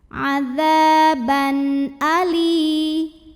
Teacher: Ada idhar halqi sebab ada tanwin fathah bertemu dengan huruf tenggorokan halqi yaitu hamzah a, maka tanwinnya dibaca n jelas.